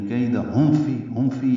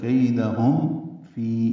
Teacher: یا مدہ ہے، 2 حرکات لمبا ہے